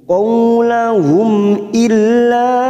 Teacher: ada Mad yang bertemu dengan Hamzah di lain kalimat Mad Jaiz munfasil empat harakat kita panjangkan · mim sukun bertemu Hamzah Idhar syafawi kita baca jelas tanpa mendengung